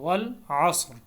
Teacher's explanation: صاد کو موٹا کریں گے، را بھی موٹا پڑا جائے گا